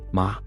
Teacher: Ma scold sharp fall